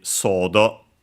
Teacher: more likely than not, the accent would be sodo on the so